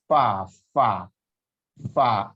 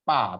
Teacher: Fa itu bertemunya perut bibir bawah dengan gigi seri atas. Fa. F ya, jangan pa tapi fa, F ya.